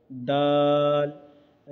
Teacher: दाल का मखरज ज़ुबान की नोक को ऊपर के दांत की जड़ में लगाने से दाल अदा होते हैं